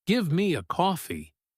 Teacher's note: the grammar is perfectly correct, but the flat direct intonation makes you sound like a military commander. It sounds aggressive.